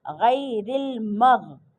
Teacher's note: غین حرف مستعلیہ میں سے ہے تو غین کو موٹا پڑھیں گے